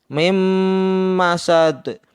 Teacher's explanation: Mim dibaca dengung seperti ada tasdidnya karena nun sukun bertemu dengan huruf mim, sehingga dibaca idgham bi gunnah atau dengung.